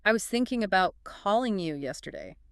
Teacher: thinking, calling yesterday. The other words, I was about, they're quicker, quieter. That they're the grammatical glue, but thinking, calling yesterday are the bricks.